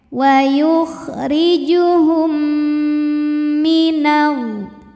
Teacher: Kemudian ada hukum idgham mimi sebab mim sukun bertemu mim berharokat, maka cara bacanya mim pertama dileburkan ke mim yang hidup disertai bunyi dengung m.